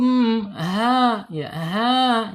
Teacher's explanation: Ha ini makhrajnya ada di bawah tenggorokan